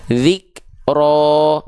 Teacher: dengan keadaan yang tebal pangkal lidahnya naik Nah karena pangkal lidah naik inilah yang membuat vokal a pada harakat fathah otomatis berubah jadi vokal O